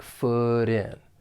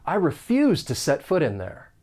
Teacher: that final T in foot I'm from the United States so I am going to pronounce this as a flap T it's going to sound like a soft d